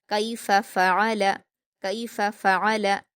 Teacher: कैफ, कैफ फ़अल, फ़ा पर हरकतें जल्दी पढ़ेंगे। आइन पर हरकतें हलक से अदा करते हुए जल्दी पढ़ेंगे